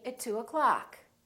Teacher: reduce the o in the word o'clock